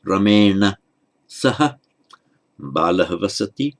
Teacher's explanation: And remember the rule about the r, if there's a following n in the same word, including certain categories of intervening consonant, of which m is one, then the r still makes the following n retroflex